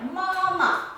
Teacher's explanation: you will see it's flat and it's also long